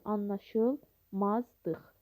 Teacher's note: L şəkilçisində olan, yəni anlaşılmazlıq sözündə olan ikinci L samiti olduğu kimi qalır. L şəkilçisində olan L samiti isə D samiti kimi tələffüz olunur.